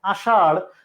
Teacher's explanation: ডয় বিন্দু র এবং ঢয় বিন্দু র এর ধ্বনিকে বলা হয় তাড়নজাত ধ্বনি। জিহ্বা, জিহ্বা এরকম ভাঁজ খেয়ে একটা বাড়ি খায়, তাড়ন থেকে এর জন্ম, জাত, এটা জাত হয়েছে, তাই এর নাম হচ্ছে তাড়ন জাত ধ্বনি।